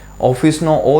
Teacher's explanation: ઓફિસનો ઓ છે એ વિવૃત છે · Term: વિવૃત સ્વર